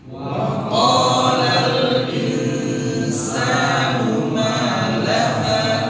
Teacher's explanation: Insan harus didengungkan sepanjang 2 harakat.